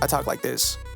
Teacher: my natural, my speaking tone or whatever, it gets kind of fried. Like it's not like it when I'm animated. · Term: vocal fry